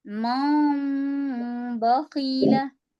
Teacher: हल्का सा इफा होगा और फिर गुना हो जाएगा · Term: इकलाब